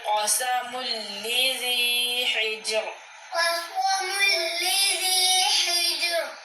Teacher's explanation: جی یہاں پہ میم نون تنوین کے بعد لام آیا ہے، حروف یرملون میں سے لام آیا ہے، ادغام کا قاعدہ ہو رہا ہے، لام اور را میں ادغام بلا غنہ ہوتا ہے